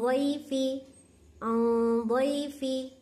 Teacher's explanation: आइन नून ज़बर आ, ضاد या ज़बर ضई, आ ضई, फा ज़ेर फी, आ ضيफी, आ ضيफी, आ क्या है, मैं नाक में छुपा रही हूँ, लेकिन यहाँ ضاد होने की वजह से आ मोटा कर रही हूँ, गुन्ने को मोटा कर रही हूँ